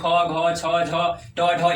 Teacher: महाप्राण में प्राण वायु अधिक, यानी हवा अधिक निकलता है।